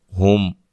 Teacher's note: میم ساکن کا یہاں اظہار ہے، غنہ نہیں کریں گے